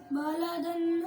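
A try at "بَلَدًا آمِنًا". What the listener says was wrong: आप थोड़ा सा गुन्ना करते हो नून साकिन और नून तनवीन पर जब रूफ़े हल्की के साथ भी। फिर पढ़ो बिल्कुल ना गुन्ना करो। बालदन आमीनन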